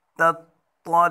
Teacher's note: پہلے تا پڑھیں گے جو باریک ہے، اس کے بعد طا پڑھیں گے جو موٹا ہے، پہلے باریک پھر موٹا